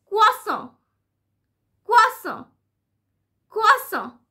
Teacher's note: So you can see and you can listen that the stress is on the first syllable. It's on qua.